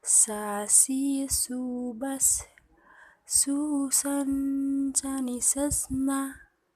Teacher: Melafalkan huruf sa menyentuh ujung lidah dengan gigi seri bagian atas.